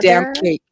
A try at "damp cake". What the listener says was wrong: it sounds like you're saying that damn cake too.